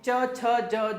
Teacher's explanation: च में आपकी जीभ टच कर रही है आपके तालु को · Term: च वर्ग